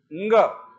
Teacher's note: पांचवा अनुनासिक यानी नाक से उच्चारण कर